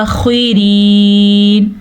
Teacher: را کو باریک پڑھنا ہے کیونکہ را کے نیچے زیر ہے · خا کو پر پڑھنا ہے